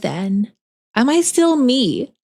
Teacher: if I focus real hard and I speak this way I can remove the vocal fry